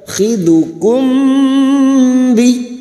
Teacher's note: Karena di sini kita wasal, sekarang kita uraikan pada kalimat khidukum bi, mim sukun bertemu ba, ikfa syafawi, mim sukun mendengung selama 3 harokat